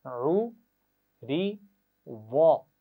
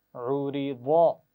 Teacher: تو پہلی دونوں آوازیں باریک ہیں، آخری آواز موٹی آواز ہے